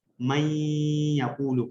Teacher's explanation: اور رائٹنگ کے اندر وہ ہمیں نظر آ رہا ہے، من یقول نظر آ رہا ہوتا ہے نون کے ساتھ، لیکن ساؤنڈ کے اندر وہ من نہیں پڑھا جاتا، من یقول پڑھا جاتا. میم کو ڈائریکٹ ہم یا کے ساتھ لگاتے ہیں، بیچ میں سے نون کی صرف ہلکی سی ایک ہنٹ ہوتی ہے، باقی نون کا کوئی باقاعدہ واضح ساؤنڈ جو ہے وہ اس میں موجود نہیں ہوتا.